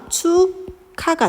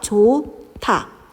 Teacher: 그드브스, 히읗이 만나서 크트프츠가 되는 것이 우리는 자음 축약, 거센 소리 대기, 격음화라고 합니다